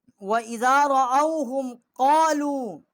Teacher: یہ قالو جو ہے یہ چھوٹی مد ہے، یہاں بھی ہم نے 3 الف جتنا آواز بلند کی ہے